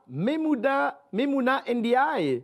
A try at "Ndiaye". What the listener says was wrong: Oui, mais le nom de famille, vous l'avez massacré. On ne dit pas le N. C'est juste Ndiaye.